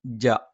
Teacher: ജ നാവിന്റെ മധ്യഭാഗം മേലെ അണ്ണാക്കിലാണ്